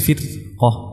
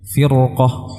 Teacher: namun karena di depannya ada huruf qaf yang dia adalah huruf isti'la, maka ditebalkan menjadi firqah